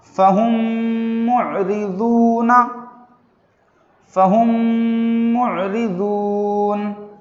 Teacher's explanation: میم کو میم سے ملا کر غننے کے ساتھ پڑھ رہے ہیں